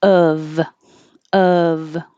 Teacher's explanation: thing it's o f but it sounds like u v and most of the time we drop the v sound and it just sounds like uh so of of and then when there's two f's now all